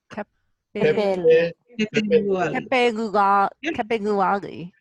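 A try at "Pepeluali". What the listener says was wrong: Yeah, you got it. Good job.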